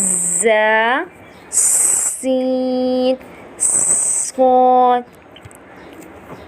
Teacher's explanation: ز، سین، صاد ادا کرتے وقت سیٹی کی طرح تیز آواز نکلتی ہے. ایک سیٹی والا ساؤنڈ جو ہے وہ ہماری وائس میں ہونا چاہیے. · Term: سیٹی والے حرف